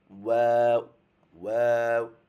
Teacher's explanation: তারপর হচ্ছে 15 নাম্বার মাখরাজ, দুই ঠোঁটের মধ্যখান হতে, মানে ঠোঁট থেকে উচ্চারণ হয়, দুই ঠোঁট একত্র করে ওয়াও, ওয়াও।